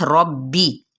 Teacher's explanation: रॉ पढ़ा पुर पढ़ा जाएगा यानी तफ़ख़ीम के साथ